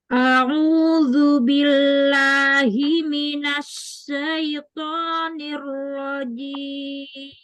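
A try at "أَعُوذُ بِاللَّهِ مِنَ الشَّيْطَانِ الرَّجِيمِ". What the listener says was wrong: Minasnya tafasyi, bukan as-safir, bukan binas, tapi minasya.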